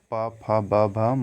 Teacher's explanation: प, फ, ब, भ, म ये सभी ओष्ठ से उच्चारित किया जाता है